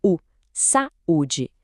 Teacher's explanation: Então o A fica na sílaba sa e o U vira uma sílaba sozinho